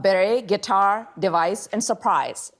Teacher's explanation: beret, guitar, device, and surprise, all of which have stress on the second syllable